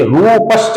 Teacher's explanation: इसका उच्चारण होगा रूपः, और रूपः का जो विसर्ग है इसके आगे च आने के बाद इसका जब संधि होता है तो इसमें श बन जाता है, तो ये रूपश्च हो जाता है।